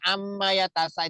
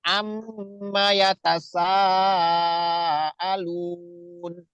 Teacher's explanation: Jadi nggak boleh ammayatasa, itu nggak boleh cepet-cepet. Di mimnya itu harus ditahan dulu. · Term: mim bertasdid